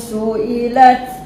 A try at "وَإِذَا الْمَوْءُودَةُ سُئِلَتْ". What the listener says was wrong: Siapa bunyi macam tebal tu makcik kan. Cik kena buka sikit lagi rahang tu kan.